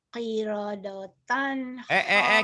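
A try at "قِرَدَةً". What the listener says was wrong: Ronya doang yang O, danya huruf Sunda. Kiroda, jangan kirodoton, kirodatan.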